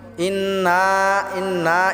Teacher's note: ইন এটা আমরা গুন্না করবো